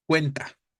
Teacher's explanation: manera concreta para este caso sería entonces la penúltima no cuen en cuenta la sílaba tónica sería cuen la penúltima y sabríamos que en ese contexto es grave terminado en vocal